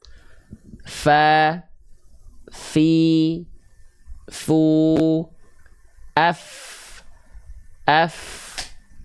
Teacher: ujung gigi seri atas kita disentuhkan dengan badan atau perut bibir bawah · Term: huruf Fa